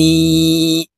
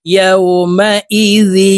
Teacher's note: তানউইনের পরে ইদগামে বা গুন্নার চার হরফের একটি হরফ ইয়া আছে, এই কারণে এই জাল তাসদিদওয়ালা ইয়ার সাথে গুন্নার সহিত মিলাইয়া পড়তে হবে। ইয়াউমা ইজি ইয়া সাদ জবর ইয়াস দাল পেশ দু ইয়াস দু র নুন পেশ রুন ওয়াজিব গুন্না।